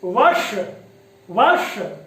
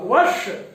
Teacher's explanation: तो यहां पर जब हम उच्चारण करेंगे तो आप देखेंगे कि जो जिह्वा नोक है वो थोड़ी पलट करके हमारी मूर्धा को स्पर्श करे और वायु दोनों पार्श्व से बाहर निकल जाए